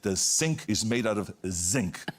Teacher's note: the vibrating Z we don't have that in German